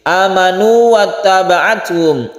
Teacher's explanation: Oleh karena itu ini tidak boleh ditasydid. Meskipun ini wawu bertemu wawu, tapi tidak boleh ditasydid karena bukan idgham mutamasilain. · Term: mad tabi'i biasa